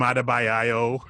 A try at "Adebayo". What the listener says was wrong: you had to stay adding extra syllables.